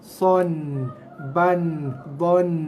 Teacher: Membunyikan bunyi baris 2 sama macam bunyi nun mati, iaitu ada bunyi dengung sikit ujung dia.